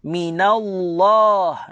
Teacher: Sebelum kalimah Allah baris atas, kita baca tebal.